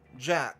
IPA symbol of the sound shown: dʒ